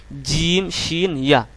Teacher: জিহ্বার মাঝখানটাকে উপরের তালুর সাথে লাগায় শক্ত করে উচ্চারণ করবেন